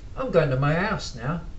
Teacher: so the H drops off and it just really becomes house.